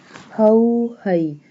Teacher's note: ha will pronounce from the bottom part of throat